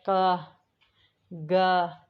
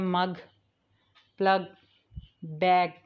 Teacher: हमारी टंग का जो बैक होता है वो हमारी सॉफ्ट पैलेट के साथ टच होता है